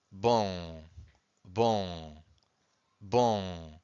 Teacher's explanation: So I'm using my nose. I can feel my nose vibrating a little bit when I say on. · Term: nasal sound